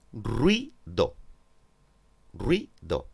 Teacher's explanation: Bien, en este caso, las dos vocales se pronuncian en la misma sílaba. Es decir, forman un diptongo, una sola sílaba.